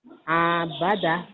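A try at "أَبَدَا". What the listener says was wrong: Salah. Nggak ada yang panjang, Pak. Abada.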